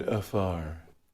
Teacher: where the first a is short the second long